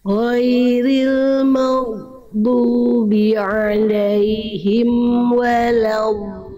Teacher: Dot punya sifat rohwah, mengalir suaranya. Jangan sampai jangan berhenti suaranya.